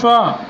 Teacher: श बोल रहे हैं हम तालु से, यानी तालव्य वर्ण हो जाएगा ये हमारा